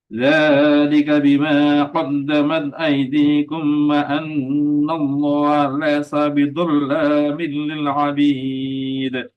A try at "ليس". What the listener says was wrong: Jangan laisa, jangan wa annallaha laisa, jangan lai, lebih banyak dominan ke kasrah i, lai.